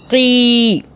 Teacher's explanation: قی، تو آگے یا آ رہی ہے تو یا یہاں پہ لین ہو رہا ہے یا مدہ، مدہ کا مطلب کھینچنا، اب یہاں پہ یہ مدہ ہو رہی ہے، کیسے؟ قاف زیر قی ہوتا ہے تو ہم نے یا کی وجہ سے کیسے پڑھا؟ کھینچ لیا